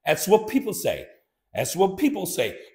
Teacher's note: so the th is somewhat dropped